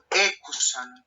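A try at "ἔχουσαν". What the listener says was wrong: Ecusan, bravo.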